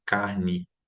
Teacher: É um E, só que a gente pronuncia um I, né? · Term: I pós-tônico final